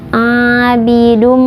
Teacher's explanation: Kemudian bidum ini idgham bigunnah karena ada tanwin bertemu dengan huruf idgham bigunnah yaitu mim, jadi dibacanya dimasukkan ke mim kemudian ditahan 2 harokat. Abidum, seperti itu.